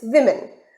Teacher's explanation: There are 2 syllables, we and min, and the stress is at syllable we.